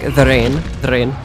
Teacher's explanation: with Greek it's like the D sound is like almost like a th sound